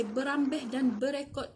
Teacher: Dalam dialek Samarahan, bermalam dan lari dalam dialek penutur di kawasan tersebut menyebutnya sebagai berambeh dan berekod dengan membunyikan dan menggetarkan kesonan R dengan cara hujung lidah digetarkan apabila ia menyentuh gusi